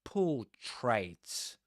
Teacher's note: Accent on the first syllable, po. That's a long O sound.